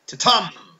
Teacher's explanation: it consists of one unstressed and one stressed syllable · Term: iamb